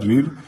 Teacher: जिसका मूर्धा से उच्चारण होता है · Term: मूर्धन्य स्वर